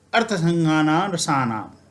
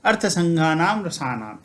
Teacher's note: हमने यह सीखा है कि मकार के बाद जब कोई व्यंजन आता है तब यह मकार अनुस्वार में परिवर्तित हो जाता है